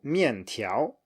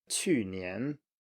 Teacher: fourth plus second, i.e. falling and then rising.